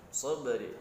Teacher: di situ ada ba sukun ya. Nah, di situ terdapat hukum qalqalah sughra, kecil ya, pantulkan